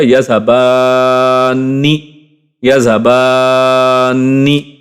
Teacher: اب ویسے ہم اس کے لمبا کیے بغیر پڑھ ہی نہیں سکتے پراپرلی، تو بان بان یعنی ایک تو لمبا کرنا ہے پھر نون کے ساتھ جوڑنا ہے کیونکہ تشدید ہے، اور نی پھر اس کے بعد پڑھ لینا ہے. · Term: نون تشدید